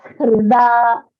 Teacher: The Hrida, it is not Rida, it is Hrida. So the Hakara has to be a little more audible because it sounds like Rida. It should not be Rida.